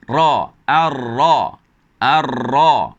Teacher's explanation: Hujung lidah bertemu dengan tempat lengkungan gusi yang kesat ini, menjadikan bunyinya ra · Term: huruf ra